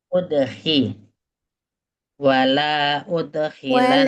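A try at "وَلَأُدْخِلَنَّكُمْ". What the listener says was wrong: Wala ude nggak panjang lamnya. Wala udkhilannakum.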